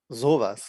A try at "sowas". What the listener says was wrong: Yeah, in this case, when it's not sarcastic or you're not being surprised, you don't stretch the O. You don't say like, sowas. Yeah, it's not like that in this case.